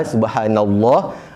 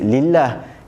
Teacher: lam kat tengah tu ada masa baca tebal subhanallah, ada masa dibaca nipis lillah